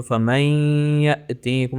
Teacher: فمن یأتیکم، فمن تھا اور آگے یا ہے جو حروف یرملون میں سے ایک ہے، جو ادغام کے 6 حروف ہیں نا، تو اس کو ہم فمن کی ساؤنڈ کو ہم نے یا کے ساؤنڈ کے ساتھ مکس کر دیا، تو فمن یأتیکم، اور غنہ کریں گے 2 حرکات تک کھینچیں گے